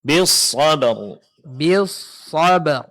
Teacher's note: Jangan lupa huruf ra dijelaskan dan ditebalkan